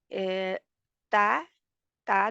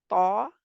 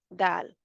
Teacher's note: हम ज़ुबान की नोक जो है वो ऊपर 2 दांतों के मसूड़ों से लगाते हैं, जो बम्पी सा पार्ट होता है मसूड़ों में उधर। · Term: हरूफ नितइया